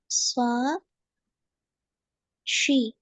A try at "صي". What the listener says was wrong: ஷீ அல்ல, அது போல. ஸ்வா சரி. ஸ்வா ஷீ ரெண்டும் ஒரே இடத்துல தான் வருது. ஒரு இடத்துக்கு எடுங்க. ஸ்வா ஸ்வி ஒரே இடத்துக்கு எடுங்க.